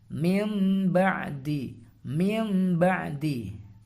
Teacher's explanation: mengganti nun sukun atau tanwin dengan huruf mim disertai dengan dengung